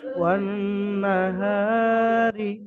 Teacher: রয়ের নিচে জের হারাকাত, তাড়াতাড়ি পড়তে হবে, টান দেওয়া নিষেধ